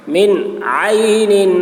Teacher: عین حلق سے ادا کریں گے